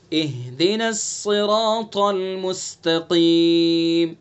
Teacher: طا کو پر پڑھیں گے چونکہ حروف مستعلیہ میں سے ہے، ٹھیک ہے. مستقیم، قاف کو پر پڑھیں گے چونکہ حروف مستعلیہ میں سے. · صاد کو پر کریں گے چونکہ حروف مستعلیہ میں سے ہے. را کو پر پڑھیں گے چونکہ را کے اوپر زبر ہے. الف کو بھی پر پڑھیں گے چونکہ را سے پہلے الف سے پہلے پر حرف ہے. · الف کو بھی پر پڑھیں گے چونکہ را سے پہلے الف سے پہلے پر حرف ہے. را، چونکہ را پر ہو گئی تو اس لیے الف بھی پر پڑھا جائے گا